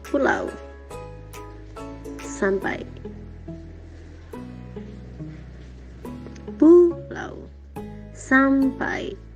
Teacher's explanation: vokalit pertama bersonoritas sedangkan vokalit kedua kurang bersonoritas, bahkan mengarah ke bunyi non-vokalit. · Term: diftong menurun